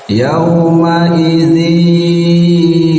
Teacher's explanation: Cara melafalkan huruf idgham bi gunnah itu namanya juga gunnah ya, berarti harus melalui hidung ya, jangan di mulut semua